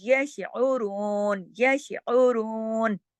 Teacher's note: آئین کو اپنے حلق پہ اپنے مخرج سے ادا کریں گے · رون، پورا را کو موٹا کر کے پورا اس کو 2 حرکات کھینچ کے، کیونکہ اس کے ساتھ واؤ مدہ ہے